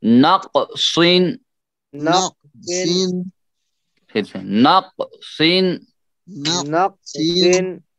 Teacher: یہ قاف بھی موٹا اور صاد بھی موٹا اور اونچا، بہت موٹا اور اونچا.